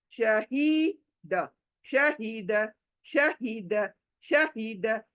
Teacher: य हलक में से नहीं आना ये गोल हा है यह सीने में से आना